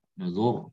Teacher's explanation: ro sukun sebelumnya dhammah. Nah, maka tebal nuzur. Ya, jadi melihat rosem.